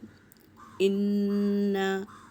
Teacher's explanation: ان نون پر تشدید ہے تو یہاں پر غنہ کرنا ہوگا